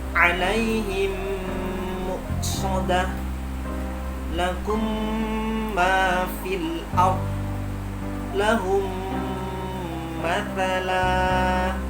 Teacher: dimasukkan dan didengungkan selama 3 ketukan, dan gunnah keluar dari pangkal hidung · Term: idgham mimi